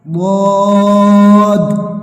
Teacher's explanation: زبان کی کروٹ اور اوپر کی داڑوں کی جڑ سے ادا ہوتا ہے